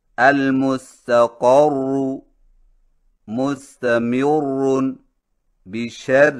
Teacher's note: شد والی را پر وقف اس طرح کریں کہ تشدید باقی رہے اور حرکت کا کوئی حصہ ظاہر نہ ہو